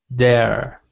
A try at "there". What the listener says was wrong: I'm hearing dare. So try saying that sound again. There. So I'm not seeing your tongue come out between your teeth. It needs to come out between your teeth like this.